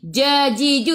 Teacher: Jajiju ingat tak ada angin. Bukan hurufnya hamas. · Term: Al-jahru